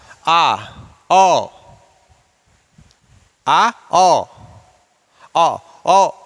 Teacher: अब आता है विवृत स्वर, विवृत स्वर जिसमें मुंह सबसे ज्यादा खुलता है। विवृत स्वर में मुख द्वार सबसे ज्यादा खुलता है, इसलिए इनको विवृत स्वर कहते हैं।